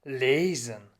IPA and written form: ˈleːzn̩ (Lesen)